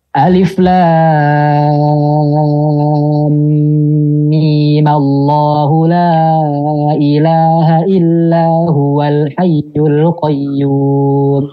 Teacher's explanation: menyambungkan alif lam dengan lafaz jalalah dengan memanjangkan mim 2 harokat saja dan menghidupkan dengan fathah